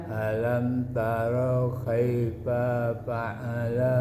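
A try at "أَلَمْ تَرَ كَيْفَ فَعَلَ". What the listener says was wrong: Nah, kan? Jadi panjang kan? Kaifa fa'ala. Jadi fa-nya jadi panjang.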